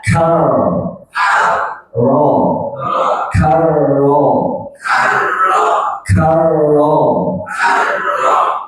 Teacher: R bertasydid ini ditebalkan karena sebelumnya berharakat fathah